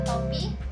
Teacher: Contoh fonem T jika berada di awal kata atau suku kata dilafalkan secara lepas. Pada kata topi, fonem T dilafalkan secara lepas.